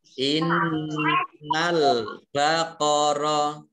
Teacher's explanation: Nun tasdid dibaca gunnah, ditekan 2 harokat.